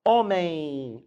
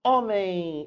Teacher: Normalmente faz um ditongo nasal. Homem. Aparece esse I.